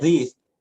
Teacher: Kalau for example we're doing this for professional purpose, to produce that words that had TH sound, how do we know we produce it correctly? By making sure that the tip of our tongue is actually between the teeth. That's when you know, when the tongue is outside the mouth, then you're producing the correct sound.